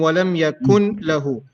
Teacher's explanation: the noon is completely merging into lamb so the pronunciation of noon won't be there